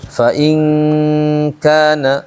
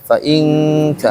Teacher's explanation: Lihat nun ketemu kaf bunyinya eng nangka. Nangka mingkem ya.